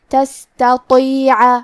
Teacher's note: تا اور تا کی ادائیگی ایک ہی جگہ سے ہے اور وہ ہے زبان کی نوک اور اوپر کے دانتوں کی جڑ سے، لیکن تا حروف ترقیق میں سے ہے تو ہمیں تا کو پتلی آواز میں پڑھنا ہے اور تا حروف تفخیم میں سے ہے تو ہم حرف تو کو موٹی آواز میں پڑھیں گے، تستطیع۔ آخری میں عین پہ زبر ہے لہذا ہمیں عین کو ظاہر کرنا ہے۔